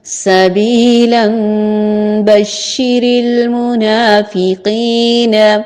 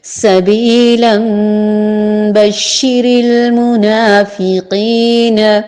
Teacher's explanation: اب میں نے اسے ملا کے جان بوجھ کے پڑھا ہے، تنوین کے بعد حرف با آیا ہے، تو جب بھی نون ساکن یا تنوین کے بعد حرف با آئے تو وہاں اقلاب ہوتا ہے، نون کی آواز میم میں بدل جاتی ہے